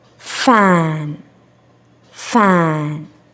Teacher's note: upper teeth send a smooth air flow to outside of your mouth